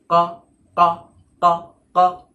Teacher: যখন জিভের গোড়া ওপরের নরম তালুতে টাচ হয় তখন কফ উচ্চারণ হয়